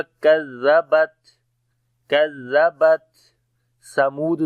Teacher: تا کے اوپر صفت شدت اور ہمس دونوں آئے گی، سانس جاری ہوگا